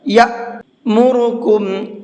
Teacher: اب حمزہ ساکن اگر ہوتا ہے تو اس کو جھٹکے کے ساتھ میں پڑھتے ہیں، اس لیے یہاں پر یہ جھٹکے سے پڑھا جائے گا۔ یا مورکم، را کو منہ بھر کے پڑھیں گے، کم کے اندر غنہ کر کے پڑھیں گے